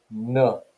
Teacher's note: nuh is a alveolar nasal phoneme